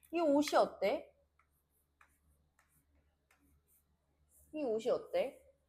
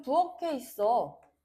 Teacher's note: 발음할 때 그냥 비어있는 초성에다가 종성을 올려주기만 하면 되는 거야. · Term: 연음